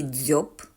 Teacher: чуєте в слові дзьоб правильна відповідь звучить так в слові дзоб Ми чуємо М'який приголосний дзь на початку слова